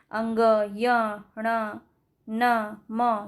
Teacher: ये जो व्यंजन के उच्चारण में वायु नाक से निकलती है इसे नासिक या अनुनासिक व्यंजन भी कहते हैं